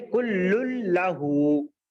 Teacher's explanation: نون کی آواز کو غائب کر دینا ہے بس یہاں پر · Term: ادغام بلا غنہ